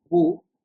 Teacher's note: While reading the zabar, your mouth will be open like ba, and by reading the zayd kasra, your voice will be lowering b, and by reading the pesh, your lips will be in the rounding shape like boo